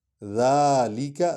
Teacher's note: ذا کو لمبا کریں کیونکہ اس پر کھڑا الف ہے